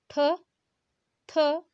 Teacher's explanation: आप देखिए, ख आपने कहा, ठ, थ, आप जब भी ये उच्चारण कर रहे होंगे तब जो मुख से जो हवा है वो उच्चारण के साथ साथ अधिक मात्रा में निकलती